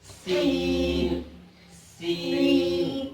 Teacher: سین کی ادائیگی میں سیٹی کی آواز ہوتی ہے